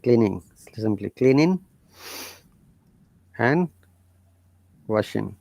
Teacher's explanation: if there is ing in a verb, they don't pronounce g, and the and becomes n.